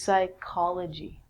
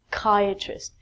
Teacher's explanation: So, psychology is the study of the mind. And actually, we say this like a k. So, this is psychology with the silent p.